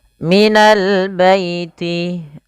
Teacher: alif lam qamariah lamnya dibaca dengan jelas